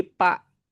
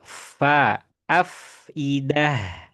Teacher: Karena ini huruf fa ini bukan dua bibir. Kalau dua bibir jadi pa